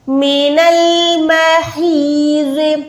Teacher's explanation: है हलक के दरमियान से निकलेगा, या के साथ मिला के 1 सेकंड लंबा करेंगे